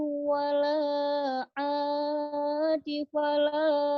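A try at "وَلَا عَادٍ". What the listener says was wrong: Wala adil. Ada tanwin. Wala adil. Famanitturra ghayra bagin wala adin fala isma alaih.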